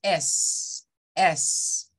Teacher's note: es como un soplido yo le digo que es como cuando se está desinflando una llanta vea o un balón [Música] es parecido muy suave y el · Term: el sonido de la s